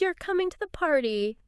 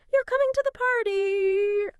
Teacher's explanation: In English, we often signal a question just by making our voice go up at the end. Even if the word order is like a statement, >> like you're coming to the party, falling intonation statement versus you're coming to the party, rising intonation question.